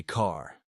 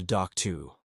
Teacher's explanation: in classic New York speech, the R disappears unless it's at the beginning of a word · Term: the dropped R